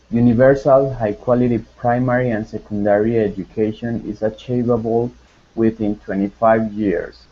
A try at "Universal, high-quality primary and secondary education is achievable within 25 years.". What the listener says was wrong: Perfect. Very good pronunciation.